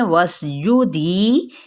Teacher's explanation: سین پہ سیٹی کو واضح کریں